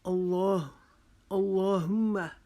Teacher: لام کے اوپر شد کی وجہ سے اور کھڑے زبر کی وجہ سے اس کو ایک الف کے جتنا لمبا کھینچ کے پڑھیں گے، اس کو جلدی سے اللہم نہیں پڑھیں گے۔